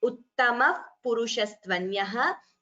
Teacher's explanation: So uttamaha purushaha, visarga followed by pa becomes what we call upadhmaniya